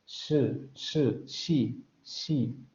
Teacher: Vean, se pega justamente la lengua a los postalveolos. No hay vibración de cuerdas vocales, salida fricativa a través de ese pequeño conducto que se forma entre la lengua y los postalveolos.